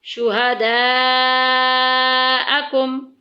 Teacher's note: مد متصل بھی ہے، بڑی مد بھی اس کو بولتے ہیں، 2.5 الف کے برابر لمبا کرتے ہیں ، اس میں طول کو پسند کیا گیا ہے، یہاں پہ